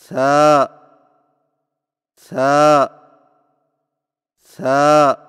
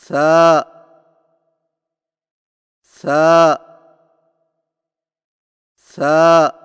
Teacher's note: ثا کی ادائیگی میں زبان کی نوک کو سامنے والے اوپر کے دو دانتوں کے اندرونی کناروں سے نرمی سے لگا کر باریک آواز میں پڑھیں، یعنی ثا ثا ثا۔